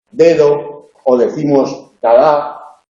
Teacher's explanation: Si decimos dedo o decimos dada, al decir dada, la primera D es oclusiva, la segunda es aproximante. La lengua se aproxima a los dientes, al nacimiento de los dientes, pero no entra en contacto. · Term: D aproximante